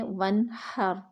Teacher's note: نون ساکن کے بعد ہا حروف حلقی میں سے آ رہا ہے تو یہاں پہ اظہار ہو رہا ہے